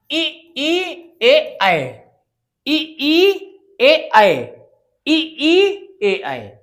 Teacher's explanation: जब आप इसको उच्चारित करके देखिए तो हमारी जीहवा का जो आगे वाला हिस्सा है वो प्रयोग में हो रहा है। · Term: अग्र स्वर